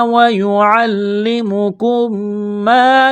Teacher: اسلام کو دبائیں گے تشدید کی وجہ سے، کاف میم پیش کم، میم ساکن کے بعد دوسری میم مشدد ہے تو کاف کو میم کے ساتھ پلس کریں گے، اس میم کا میم میں ادغام کریں گے غنے کے ساتھ